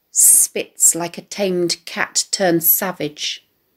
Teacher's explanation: the plosive consonants of the t sounds are onomatopoeic evoking the sound of the spitting cat